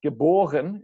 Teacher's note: In German, the emphasis is still on the B, the second syllable.